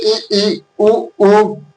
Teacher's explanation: संवृत स्वर में मुख कम खुलता है।